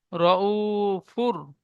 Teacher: ও সাকিনের ডান দিকে পেশ এসেছে, একে ও মাদ্দা বলে। ও মাদ্দা একালি পরিমাণ টান দিয়ে পড়তে হয়।